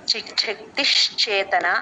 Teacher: చిచ్చక్తిహి విసర్గ ష కింద మారిపోతుంది